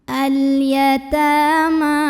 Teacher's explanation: Ta mad asli atau mad tabi'i karena ada baris fathah tegak di atas huruf ta. Cara membacanya dipanjangkan 2 harokat. Al-yatama. Ma juga mad tabi'i karena ada baris fathah tegak di atas huruf mim.